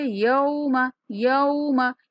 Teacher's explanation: یا کے بعد واو لین ہے، نرمی کے ساتھ ادا کریں گے